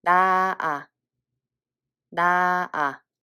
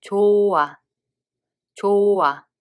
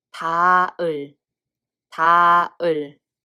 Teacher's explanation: when it's placed in front of a circle consonant hieut batchim doesn't have a sound value.